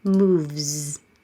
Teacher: V is voiced. Leave your voicing on.